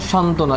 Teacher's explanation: একটি ব্যঞ্জনের সাথে যদি ব ফলা যদি যুক্ত থাকে ওই ব্যঞ্জনের অর্থাৎ ওই ব এর কোনো উচ্চারণ হয় না